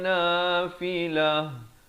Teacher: Kalau waqaf di sini ta marbutah jadi ditukarkan kepada bunyi ha